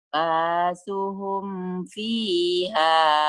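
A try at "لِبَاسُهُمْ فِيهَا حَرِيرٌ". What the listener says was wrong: linya ketinggalan, Bu. Libasuhum, linya ketinggalan. Bukan basuhum. Liba. Oh, tadi liba ya. Kedengarannya kayak basuhum doang.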